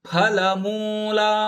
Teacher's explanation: ಫ ಮಹಾಪ್ರಾಣದ ಫ, ಲ ರಸ್ವ, ಮೂ ದೀರ್ಘಪದ, ಲಾ ಕೂಡ ದೀರ್ಘಪದ